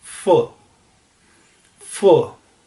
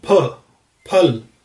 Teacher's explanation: जब हम इंग्लिश का फ बोलते हैं तो अपर टीथ, जो हमारे ऊपर वाले दांत हैं, वो लोअर लिप के साथ कांटेक्ट में आते हैं और एक फ्रिक्शन के साथ हवा बाहर निकलती है, कुछ इस तरह से फ फ।